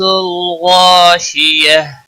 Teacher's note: وقف کی صورت میں ہا ساکن بن جائے گا، وقف بالابدال ہوگا۔